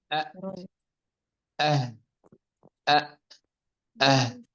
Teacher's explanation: ثم يقول أنها رتبت فلتعرفي، أي أننا إذا نظرنا إلى هذه الأحرف وجدنا أنه يقول همز فهاء، ومن المفترض أن يبدأ بالهمزة ثم الحاء ثم الخاء على حسب ترتيب الحروف العربية، لكنه رتبها ترتيبا آخر يتناسب مع ترتيب المخرج، فقال همز فهاء، وهذان الحرفان يخرجان من أقصى الحلق